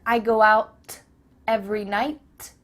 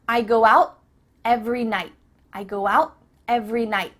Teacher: your tongue is at the top of your mouth. You're about to make the T sound, but no air goes through, so it's just stopped at the top of your mouth.